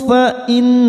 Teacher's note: nun yang bertasdid gunna musaddadah kita tekan 3 ketuk.